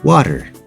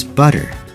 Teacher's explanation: they make a sound that is in between the sound of a hard T and the sound of a d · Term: flap T